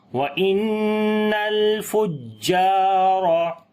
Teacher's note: جیم کی اوپر شد ہے، تھوڑی سی آواز کو سٹرونگ کر کے پڑھیں گے، لمبا بھی کریں گے، الف مدہ ہے، را کو موٹا پڑھیں گے، اس کے اوپر زبر ہے۔